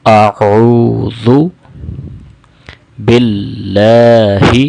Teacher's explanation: اعوذ، اعوذ، جیسے پہلے اسباق میں بھی ذکر کیا تھا کہ حمزہ گلے کے نیچے والے حصے سے ادا ہوتا ہے اور عین گلے کے درمیان والے حصے سے ادا ہوتا ہے۔ اسی طرح ذال کے اندر وصل ساؤنڈ نہیں ہوتی ہے، یعنی سیٹی کی آواز نہیں ہوتی ہے